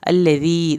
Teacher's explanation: अल्लज़ी दाल को नरमी से अदा करके या साकिन को खींचना है